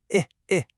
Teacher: a short I sound like in fish. It's really quick from the back of your throat.